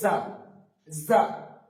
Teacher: সামনের দুই দাঁতের মধ্যে দিয়ে একটা সিটি বেরিয়ে উচ্চারিত হবে যা, যা। এই সিটিটা যেন বেরোয়।